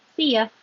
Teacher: So if you say see ya, the stress is on see.